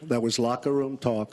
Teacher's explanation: We have a kind of a trumpeted out lip shape, which Trump really does